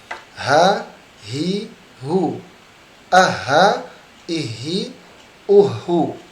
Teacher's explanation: Huruf h ini dia tebal tetapi lemah.